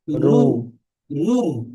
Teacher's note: রয়ের উপরে পেশ আছে, এটি তাই রকে পুর করে পড়তে হবে।